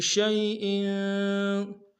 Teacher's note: شیء میں یا لین ہے، بغیر کھینچے پڑیں گے، حمزہ کے نیچے تنوین غنہ کریں گے۔